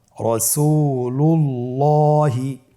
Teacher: এখানে আমরা দেখতে পাচ্ছি আল্লাহ শব্দের দ্বিতীয় লামের আগেই এখানে একটি পেশ রয়েছে, এই জন্যে দ্বিতীয় লামটিকে পোর করে পড়তে হবে।